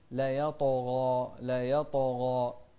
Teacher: الطاء هني ساكنة قبلها فتح في مرتبة أدنى من الغين المفتوحة اللي بعدها ألف، فتكون الغين أقوى منها في التفخيم، فنقول لا يطغى، لا يطغى، مع أن أقوى الحروف الطاء.